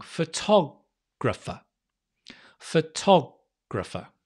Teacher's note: The to is stressed. So often the vowel before is usually a schwa.